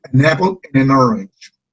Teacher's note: la N se va a unir con la O de orange.